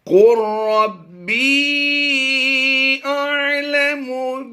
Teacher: قاف لام را پیش قر پڑھیں گے، یہ لام کی آواز جو ہے یہ سائلنٹ ہو جائے گی